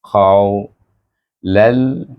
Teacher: Dan huruf qaf itu ingat huruf isti'la. Terangkat pangkal lidah kita semasa menyebut huruf qaf.